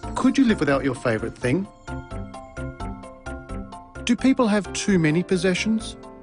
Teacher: Rising intonation patterns are used for these questions. Did you notice the pitch of his voice rise at the end of the questions?